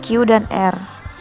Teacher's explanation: bunyi yang dihasilkan oleh keterlibatan pangkal lidah dorsum dan anak tekak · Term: bunyi dorso uvula